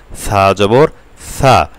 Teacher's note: সা বলার সময় অবশ্যই আমরা জিব্বার আগা দিয়ে বলবো যেন সিনের মতন না হয়ে যায়, সা না হয়ে যায়। সা জিব্বার আগা সামনের উপরের দুই দাঁতের আগার সাথে লাগবে।